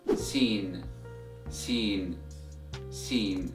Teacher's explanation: And the way you pronounce this letter is the same way you pronounce the word seen in English. So letter Seen is an alveolar letter.